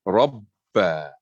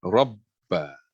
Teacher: Because the ba 2 times, we don't give qalqalah for the first ba sukun. You have to like pause. Rabba. Go to the position of pronouncing ba.